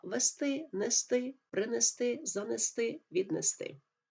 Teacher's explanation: і наголос на останньому складі мають дієслова